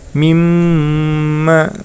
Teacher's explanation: terdapat mim tasydid maka itu termasuk hukum bacaan hunah maka cara membacanya ditahan panjangnya dua harokat